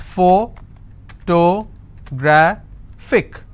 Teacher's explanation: since it's ending with IC, I will stress on gra